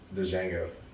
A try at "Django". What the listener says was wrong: You say Django? Django. You said like DiGiorno's pizza.